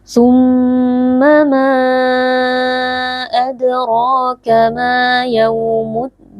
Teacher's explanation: Summa ada mim yang bertasydid wajib dibaca dengan berdengung